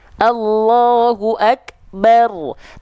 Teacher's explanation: sifat percikan nafas itu ketika huruf Kaf ya lebih kedengaran ketika dia dalam kondisi mati tapi ketika dia berharakat jadi kayak kurang kedengaran karena Kehalangin sama · huruf kaf itu sifat percikan nafasnya itu kerasa bangetnya itu ketika dia dalam kondisi sukun